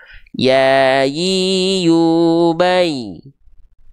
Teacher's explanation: Sedangkan huruf ya itu bukan huruf jim, maka dia cuman diangkat saja tengah lidahnya mengarah ke langit-langit tanpa menyentuh